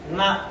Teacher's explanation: న నాలుక చివరి భాగం వెళ్లి పై ఎంగిడిని నొక్కితే వచ్చేటటువంటి మాటలు